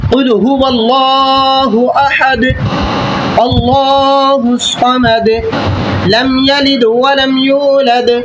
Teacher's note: جب دال ساکن ہوتا ہے تو اس پہ زبان کو جنبش دیتے ہیں، یعنی کہ قلقلہ کرتے ہیں، جیسا کہ میں نے پڑھاتے ہوئے کیا۔